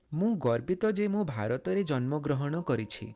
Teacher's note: Here in both Gorbito and Janmagrahana, you add the O sound.